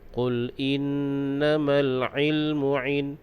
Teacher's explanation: huruf ain di situ makhrajnya keluar di tengah kerongkong